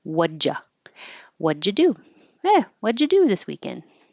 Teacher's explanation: the D and the Y next to each other here are going to make the j sound. So j, same as ch, but with voicing.